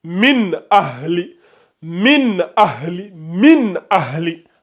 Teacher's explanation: s'il y en a un A qui vient juste après le Noun, on prononce clairement le Noun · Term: Izhar